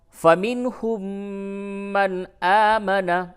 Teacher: اس جگہ پہ میم کے اوپر تشدید ہے، میم پہ غنہ کریں